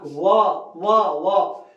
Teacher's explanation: होठ जो हमारे हैं वो दांत को दबा रहे हैं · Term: दंत प्लस ओठ